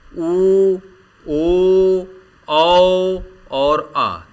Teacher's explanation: हैं पहला होता है वृत्ताकार वृत्ताकार यानी गोलाकार वृत्त की तरह जब स्वरों का उच्चारण किया जाए और ओठ गोल हो जाए तो उन स्वरों को क्या कहेंगे वृत्ता कार स्वर कहा जाएगा